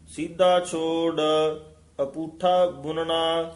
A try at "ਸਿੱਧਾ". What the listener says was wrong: ਇਹ ਵੀ ਸਿੱਧਾ ਦੱਦੇ ਨਾਲ ਨਹੀਂ ਬੋਲਣਾ, ਸਿੱਧਾ।